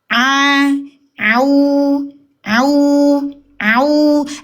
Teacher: Huruf ain itu tenggorokan tengah di area katup epiglotis kita. A au. Dan dia bukan huruf tebal dibunyikan u bukan.